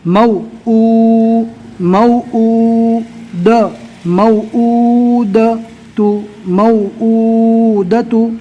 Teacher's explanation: واو مدہ کا جو پیش ہوتا ہے اس کو ایک الف کے برابر کھینچ کر پڑھیں گے